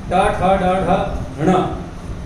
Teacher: इनका उच्चारण स्थान मूर्धा है। ये वर्ण मूर्धा के बगैर बोले नहीं जा सकते, जीभ जाके मूर्धा पे लगेगी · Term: टवर्ग